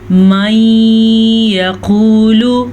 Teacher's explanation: قاف کو پر پڑھیں گے، قاف ہمیشہ ہی پر پڑھا جاتا ہے، اور لام کو لمبا نہیں کریں گے کیونکہ لام کے اوپر پیش ہے۔